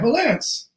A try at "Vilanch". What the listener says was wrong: How do you say chess? It's not cess, it's chess. You have to pronounce the CH. So Bruce Vilanch.